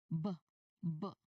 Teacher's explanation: So when you try to make letter B sound of course as you can see BB B my lips are completely closed or sealed and I press them together gently. So you can start the vibration immediately in your throat before you open your lips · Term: voiced sound